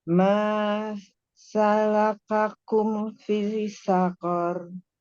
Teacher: I-nya dipanjangkan aja, jangan dimasukkan ke sin.